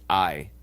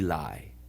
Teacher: if you listen very carefully in I, you can hear that the A merges with the E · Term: diphthong